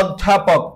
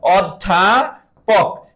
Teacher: অ এর পর একটা জফলা আছে, অর্থাৎ অ উচ্চারণে ও হয়ে যাবে, আর ও হলে আমরা তাকে বলবো সংবৃত।